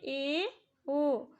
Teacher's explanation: जब ए ओ बोलते हैं तो हमारा मुंह संवृत से थोड़ा सा ज़्यादा खुलता है, इसलिए हम इसे अर्ध संवृत कहते हैं।